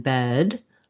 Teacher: when i have a voiced sound like a d then i'm going to hold the vowel sound longer